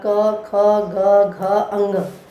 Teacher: क वर्ग, क, ख, ग, घ, अंग, इनका उच्चारण स्थान है मेरे बच्चों, इनका उच्चारण स्थान है कंठ। यानी जब हमारे मुख से वायु, अंदर से वायु निकलती है वो कंठ से टकराती है, कंठ से टकराती हुई निकलती है, तो क वर्ग का उच्चारण स्थान है मेरे बच्चों कंठ।